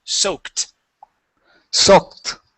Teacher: when the word sounds like a K sound, like soak, that ed is a T.